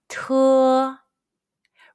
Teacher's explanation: When you pronounce the T sound, place the tip of your tongue between the back of your upper front teeth and the gum. Then push a strong puff of breath from the tip of your tongue when you say it. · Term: initial T